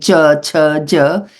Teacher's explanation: the tongue touches the pallet while saying ch ch J